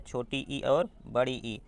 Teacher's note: तालु से उच्चारित होता है छोटी ई और बड़ी ई